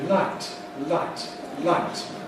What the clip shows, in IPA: laɪt